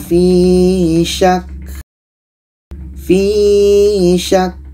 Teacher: ka ini sifatnya Hamas maka kita mesti dapatkan anginnya